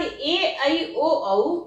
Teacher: ये ए, आई, ओ, औ स्वयं 2 स्वरों के मिलने से बनते हैं, इसलिए ये दीर्घ स्वर हो जाते हैं। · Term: मिश्रित